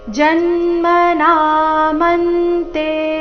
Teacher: ಜನ್ಮ ಜ ಮೇಲೆ ಆಘಾತ